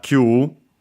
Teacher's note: Q, which is a number accented on the first mora like nana